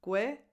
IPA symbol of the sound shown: ɪ